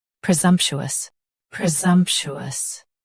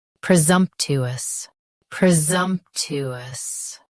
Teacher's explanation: US uses chew. UK uses to.